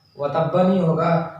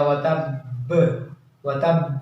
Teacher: जिस पर भी साकिन आएगा उसको क़लक़ला के साथ पढ़ते हैं, यानी आवाज़ टकरा कर वापस आती है, इसलिए वतब्बा नहीं बोलेंगे बल्कि वतब बोलेंगे।